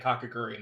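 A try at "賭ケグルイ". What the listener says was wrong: I think it's Kakegurui. You gotta pronounce the last U.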